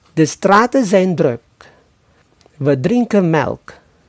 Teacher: Di berbagai daerah di negeri Belanda, terutama di bagian barat, n pada akhiran en pada bentuk jamak dan kata kerja infinitif tidak diucapkan